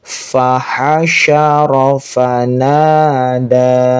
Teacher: Ini pakai fa lagi, ha-nya yang lembut, sya-nya harus mengeluarkan nafas, fa lagi, na panjang 2 harokat, da-nya panjang.